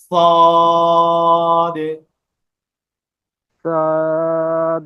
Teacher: দেখেন আমার ঠোঁট কিন্তু গোল হবে না